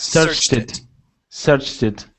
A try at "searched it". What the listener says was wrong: Perfect. That's it. That's exactly how we say it.